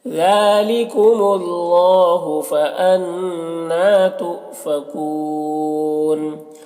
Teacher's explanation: نون مشدد غنہ کے ساتھ میں پڑھیں گے · حمزہ ساکنہ واو کی شکل میں جھٹکا لگے گا اور یہاں پر وقف کی صورت میں مد عارض وقفی ہوگا، · اللہ کے لام کو پر پڑھیں گے